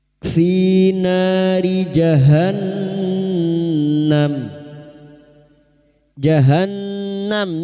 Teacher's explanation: nun yang bertasdid gunna musyaddada kita dengungan selama 3 harakat